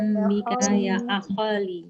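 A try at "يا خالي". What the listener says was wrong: Ya khali, nggak ada hamzahnya, bukan ya khali. Ini ya akhi jadi ya akholi. Nggak, ya khali.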